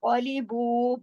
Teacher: कौलीबू, कॉफ को मोटा पढ़ना है। कौलीबू, बा के साथ वाव मद्दा है, जो 2 हरकत खींचा जाएगा। ये वाव वाव मद्दा जो है, मद की जो किस्म है, ये कसर में आती है और 2 हरकत खींचती है।